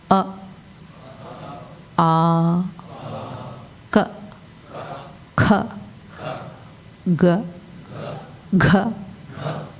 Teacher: సరిగ్గా మనం పలికితే ఈ కంఠమునందు మనకు రాపిడి తెలుస్తుంది. అది కంఠస్థానం నుండే వచ్చే అక్షరాలు. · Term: కవర్గం